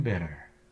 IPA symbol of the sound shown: ɾ